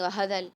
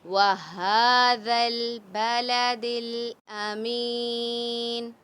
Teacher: کھڑا زبر ہے ہا کے اوپر تو اس کو ایک الف کی مقدار کھینچ کر پڑھیں گے